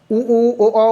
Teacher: उ ओ ओ बोलोगे तो मुंह आपका गोल जैसा बनता है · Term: वृत्तमुखी